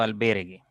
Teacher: Ya la U no se está pronunciando, la vocal débil o la vocal cerrada no se está pronunciando al momento de articular la palabra